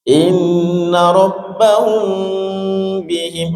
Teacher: hum mim sukun bertemu ba ditahan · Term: ikhfa syafawi